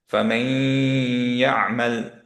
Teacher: ওকে, সো আমরা এটাকে পড়ছি ফামাই ইয়ামাল, ফামাই, ধরে রাখলাম। একটু নেজাল সাউন্ড বের করতে হবে কারণ গুণনা